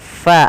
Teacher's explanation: ketika melafalkan huruf fa harus dialirkan nafasnya ya teman-teman. Jangan sampai kita membaca huruf fa ini dia menjadi huruf pa.